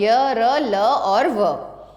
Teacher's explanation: इन व्यंजनों का उच्चारण करते समय जीभ का मुंह के किसी भी भाग से पूरी तरह स्पर्श नहीं होता। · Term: अंतस्थ व्यंजन